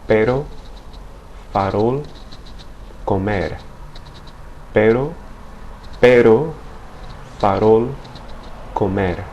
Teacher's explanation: It actually sounds more like the double T in English words like better or letter, in which the tip of the tongue strikes the ridge behind the top teeth in a single flapping motion